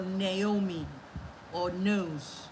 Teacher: The voiced alveolar nasal.